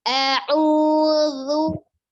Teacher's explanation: Zu itu ujung lidahnya ada di ujung gigi seri atas sama seperti huruf sa. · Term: huruf dzal